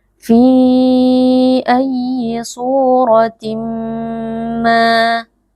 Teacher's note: tanwin yang bertemu dengan huruf mim hukumnya adalah id car membacanya tanwinnya kita leburkan ke dalam huruf mim sehingga huruf mim menjadi seperti Huruf yang bertasdid lalu kita tahan dengungnya sebentar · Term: idgham bi gunnah